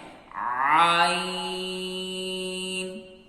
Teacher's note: عین کی آواز باریکی کے ساتھ ادا ہوگی. آپ نے دھیان رکھنا ہے اس کو آپ نے ہونٹوں کو گول نہیں کرنا. اس کے بعد جب شروع میں آپ کی آواز نکالیں گے، کے بعد اپنے ہونٹوں کو آپ نے مسکراتے ہوئی شکل میں تبدیل کرنا ہے.